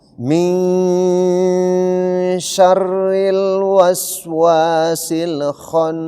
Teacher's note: Jadi nun mati ketemu huruf syin. Syin itu hukumnya ikhfa. Jadi nunnya ini dibaca samar-samar. Kemudian setengahnya jadi mungkin satu harakat samar-samar.